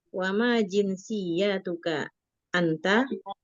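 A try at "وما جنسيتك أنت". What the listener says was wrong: Ya-nya tidak panjang. Wa ma jinsiyatuka gitu.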